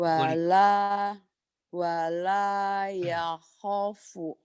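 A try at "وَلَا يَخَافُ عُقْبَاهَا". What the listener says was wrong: ho-nya panjang. Yakhafu, panjang ho-nya.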